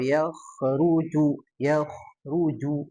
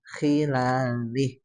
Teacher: kho nya di tebalkan lagi ya